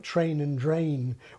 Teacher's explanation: pronouncing words like ‘train’ and ‘drain’ with an initial /t/ and /d/ to beginning with /tʃ r/ and /dʒ r/